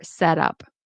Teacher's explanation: And you'll notice that it's possible that you might hear the T in set as a D because it's followed by up.